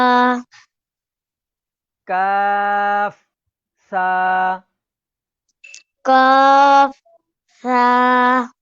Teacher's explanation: تو ناظرین جیسے سا کا جو تلفظ ہے زبان کا کنارہ اور اوپر کے دانتوں کے ساتھ ٹچ کر کے جب اس کو پڑھا جاتا ہے نرمی کے ساتھ تو یہ اپنی جگہ سے بالکل صحیح اور اس کا مخرج صحیح ادا ہوتا ہے.